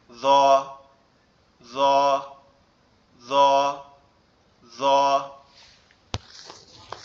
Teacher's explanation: আমাদের জিহ্বার আগা সামনের দুই দাঁতের আগার সঙ্গে লাগবে, লেগে নরম আওয়াজে উচ্চারিত হবে